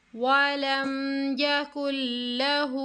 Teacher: हू को खींचेंगे एक अलिफ की मिकदार के बराबर क्योंकि उल्टा पेश है